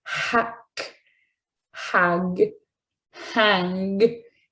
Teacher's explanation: you could actually see the back of your tongue elevated to that back part of the roof of your mouth, the velum